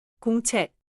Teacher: The ending check has a clear final 기역 sound, but do not add an extra vowel after it